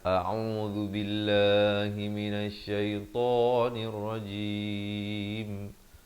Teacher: ain di pertengahan kerongkong, zal di hujung lidah